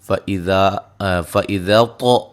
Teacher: طا کو خوب موٹا کر کے ادا کریں گے، قلقلہ بھی کریں گے